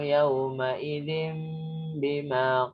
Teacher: tanwinnya itu dia samar dirubah ke mim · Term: iklab